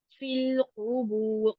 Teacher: क़ाफ पीछे वाले नरम तालु के साथ जुबान की जड़ लगेगी। फिल क़ुबूर, क़ुबूर दोनों के ऊपर पेश है, तो इसको ध्यान रखना है आपको।